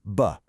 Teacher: Well, the engine is on, so it's voiced. It's made with the lips, so it's bilabial. And the air is stopped, so it's a plosive. Voiced bilabial plosive.